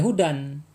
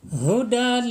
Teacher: dilebur ke huruf lam sedikit ada hentakan atau ditekankan ya menekan ke huruf lam sehingga lamnya ini benar-benar masuk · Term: idgham bila gunah